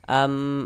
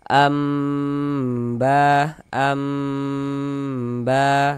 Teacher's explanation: Makanya di sini dikasih mim kecil nih. Nah, kita baca am kemudian dighunahkan, didengungkan. Jadi bagian amnya itu suaranya itu kita tahan. Nah, kita panjangkan sejenak ya. · cara membaca iqlab itu dengan merubah menjadi huruf mim. Makanya di sini dikasih mim kecil nih.